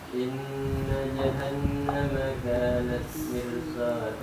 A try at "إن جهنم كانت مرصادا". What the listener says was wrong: nah itu dibaca tebal. Mirsad. Mirsad. Bukan mirsoda tapi mirsad.